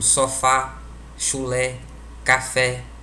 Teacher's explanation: A nossa língua dispõe de apenas 3 acentos gráficos, que é o acento agudo, indica que a vogal tônica possui timbre aberto